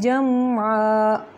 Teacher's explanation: جم پہ لمبا نہیں کرنا، صرف میم کو ظاہر کرنا ہے، اظہار کا قاعدہ ہے یہاں پہ۔